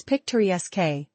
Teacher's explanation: It's picturesque, with stress on the third.